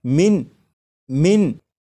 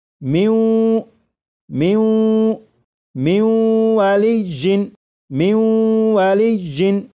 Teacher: نون ساکن کے بعد جب واو آ جائے تو نون ساکن کو واو میں ادغام کریں گے، ملا کر پڑھیں گے اور غنہ کر کے پڑھیں گے، جیسے لکھا ہوا ہے من من، لیکن جب نون ساکن کا واو میں ادغام کریں گے تو پھر یہ من نہیں پڑھا جائے گا، بلکہ اسے پڑھیں گے میوں میوں میوں والی جن میوں والی جن۔